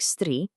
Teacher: When you have a feminine noun like stri, with that long vowel sound, a specific rule kicks in, just to shorten that vowel.